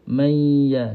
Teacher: Mesti kita kena letakkan tengah lidah kita sentuh dengan lelangit atas. · Nun ini naikkan ke hidung. Nun ini peranan dia untuk dengung. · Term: idgham maal ghunnah